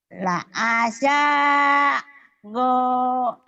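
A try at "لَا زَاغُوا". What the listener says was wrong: La azago. La azago. Go-nya panjang juga ya.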